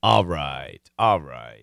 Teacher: that LR blending so we're hearing more of an ah